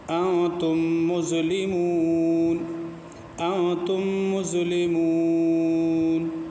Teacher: دیکھو یہاں کیا ہے، میم ساکن اور میم کے بعد میم ہے، تو یہ جو میم، تو میم کے بعد میم آیا تو ادغام شفوی ہوگا اس میں غنہ